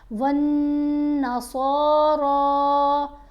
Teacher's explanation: لمبی پڑھیں گے، پھر یہاں نون کے اوپر غنہ کریں گے، صاد اور را کو موٹا بھی پڑھیں گے اور لمبا بھی پڑھیں گے